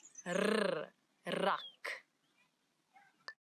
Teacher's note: a r as if your tongue is jumping up and down in your mouth